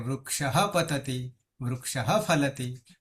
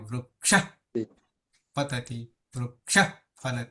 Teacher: અડધા થઈ જાય વિસર્ગ એટલે અડધો હ થઈ જાય અને વૃક્ષ પતતિ વૃક્ષ ફલતી થી આવું થઈ જશે એ વિકલ્પ